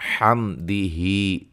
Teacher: اچھا جی، را کو موٹا ادا کریں گے، حمدہ، میم ساکن کا اظہار ہے، غنہ نہیں کریں گے، مد اصلی ہے۔